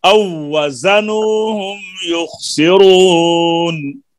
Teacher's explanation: وإذا كالوهم أو وزنوهم يخسرون، وإذا كالوهم أو وزنوهم، پہلی واو کا دوسری واو میں ادغام ہو جاتا ہے، الف نے پھر دوسری واو سے ملنا ہے، او وزنوهم يخسرون.